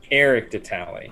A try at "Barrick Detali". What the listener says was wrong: Barrick. With a B. I got it wrong the first time accidentally, but it's Barrick Detali.